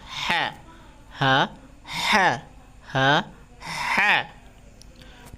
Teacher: ঠিক আছে যা ঝা তারপর হইছে হা ঠিক আছে হা এর উচ্চারণটা একটু বড় হবে হা একটা বাতাসের মত ঠিক আছে হা তারপর হলো জাল জোয়া জাল জাল জবর জা